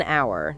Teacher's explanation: The H in hour is silent. So when you say it out loud, the word actually starts with an ow sound, like a vowel, and that is why we use an. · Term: silent H